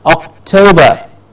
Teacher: And the toe gets the stress.